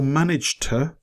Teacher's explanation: the second word, which is written to, its pronunciation is shortened to t